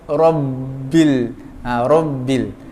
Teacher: Ra tu tebal tau. Sebab ra tu baris atas.